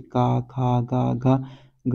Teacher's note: का वर्ग के सभी शब्द आते हैं, जैसे का खा गा घा ग, ये क्या है, कंठ से उत्पन्न होते हैं